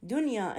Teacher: دنيا هنا النون ساكنة بنفس الكلمة أكو يمها ياء، لكن هنا ما يدغم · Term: يمتنع الإدغام